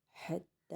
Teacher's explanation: ہا کی آواز نکال کے تا کے اوپر کھڑا زبر اس کو ایک الف کھینچیں گے